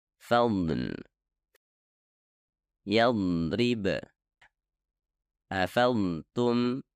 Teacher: bentuk dhad yang paling murni dan terberat adalah jika terdapat sukun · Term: dhad dengan sukun